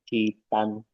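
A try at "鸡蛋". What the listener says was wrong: Harus belakangnya harus nada keempat.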